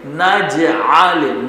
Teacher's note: نجعل نج میں قلقلہ کریں گے جیم میں